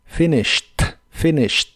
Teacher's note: las is de esta palabra son cortas y la Ed del final se pronuncia como una t